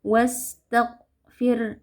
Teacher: Nah, huruf ghain juga memiliki sifat rakhawah, tapi sifat lainnya adalah jahar. Jadi pada saat membaca huruf ghain yang sukun, kita alirkan suara tapi tidak ada aliran nafas